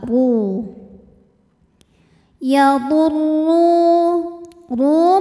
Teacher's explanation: karena ada wau sukun didahului harakat damah maka huruf ro dibunyikan ee panjang dua harakat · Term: Mad thi'i